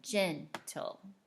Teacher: the beginning of the word has the accent instead of the back end